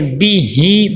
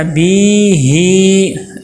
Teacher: با کے نیچے زیر ہے، زیر کو معروف ادا کرنا ہے، بی ہی، اور لمبا نہیں کرنا، بی ہی ایسے لمبا نہیں کرنا۔